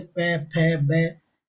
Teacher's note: अगर आप इनका उच्चारण करेंगे तो यह आपके होठ से बोले जाएंगे। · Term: होठ से बोले जाते